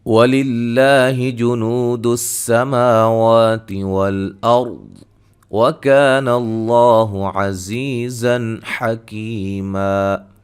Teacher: لفظ اللہ کو باریک پڑھیں گے، واو مدہ ہے، سین کو سیٹی سے مد اصلی یہاں بھی، را کو موٹا، وات کو موٹا، الف مدہ ہے، لفظ اللہ کو موٹا ادا کریں گے